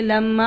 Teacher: میم مشدد پر ہر حال میں غنہ ہوگا، اور غنہ کسے کہتے ہیں؟ ناک میں آواز لے جانے کو